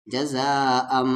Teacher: یہاں پر مد کے سمبل کے بعد حمزہ ہے تو 3 سے 4 الف کے برابر